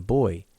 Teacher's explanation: name of the sound is a voiceless bilabial plosive and similarly the letter B as in boy is a voiced bilabial plosive